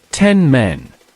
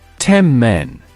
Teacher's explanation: The N becomes an M before the bilabial M.